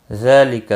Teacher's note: ذال کے اوپر کھڑی زبر ہے ایک الف کے برابر کھینچ کر پڑھیں گے